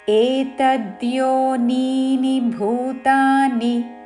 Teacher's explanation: ఏ ట మీద ఆఘాత ఏతద్యో ద కి యావత్తు ఏతద్యో నీ ని ముందు నీ దీర్ఘము చివరిలో ఉన్న ని హ్రస్వము